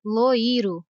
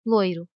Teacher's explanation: Aqui, a letra O é a vogal e a letra I a semivogal. Ou seja, a letra O é pronunciada com mais força que a letra I. Se a letra I fosse pronunciada com a mesma intensidade da letra O, a palavra ficaria loiro e não loiro.